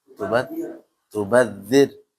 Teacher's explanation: Jangan ditebalkan jangan tubadir. Tapi ingat ra sukun sebelumnya kasrah atau baris bawah dibaca tipis